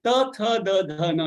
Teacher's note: As your tongue touches your teeth internally, you produce these dental sounds called the, the, na.